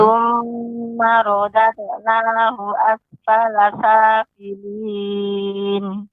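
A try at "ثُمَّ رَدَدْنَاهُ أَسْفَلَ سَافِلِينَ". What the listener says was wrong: Untuk qalqalahnya, dalnya lebih dipantulkan.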